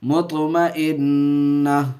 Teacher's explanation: ہائے ساکنہ بنا کر کے وقف کریں گے، سانس توڑیں گے تو ہائے ساکنہ بنا دیں گے اس کو